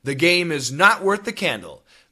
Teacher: No cancellation except the two THs link together as one.